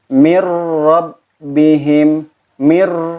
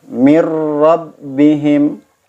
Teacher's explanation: Ketika bertemu dengan huruf ra, mir rabbihim, mir, tidak harus ada dengung karena ini bila guna, tanpa guna